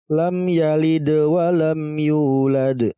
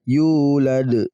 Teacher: qolqolah huruf qolqolahnya berharakat sukun di pertengahan ayat ya maka kita bacanya tetap dipantulkan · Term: Qolqolah Sugro